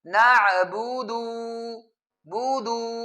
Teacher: اس دال پیش دو کے بعد واو لگا دیتے ہیں، یعنی اس کو تھوڑا سا لمبا پڑھتے ہیں